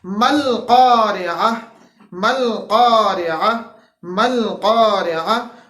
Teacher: عین آ گیا جو کہ ہمارے پاس وسط حلق سے ادا ہوتا ہے